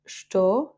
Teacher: estou, c'est ou qui est tonique. Donc, le e, on va le rendre muet.